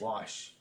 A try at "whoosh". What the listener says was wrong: He's like, you're saying wash. Whoosh.